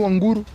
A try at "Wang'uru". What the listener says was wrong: Wanguru, there's an apostrophe. No, there's an apostrophe.